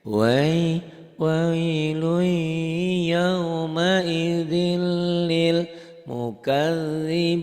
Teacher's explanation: idgham bilaguna. Jadi kalau lui nahannya lebih lama, lil sedikit aja.